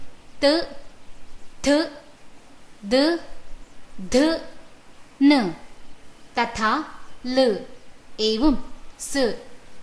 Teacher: व्यञ्जनेषु त थ द ध न तथा ल एवं स एते वर्णाः दन्तैः उच्चार्यन्ते। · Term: दन्त्याः